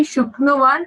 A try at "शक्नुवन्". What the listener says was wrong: Shaknuvan only. No, shakara will not get ukara.